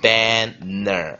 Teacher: 这两个 n 你完全念的是不同的念法？一个念的是尾音。一个念的是头音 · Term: 双声子音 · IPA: bæn nɚ